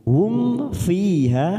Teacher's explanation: ada mim sukun bertemu Fa namanya Idhar syafawi kita baca jelas tanpa mendengung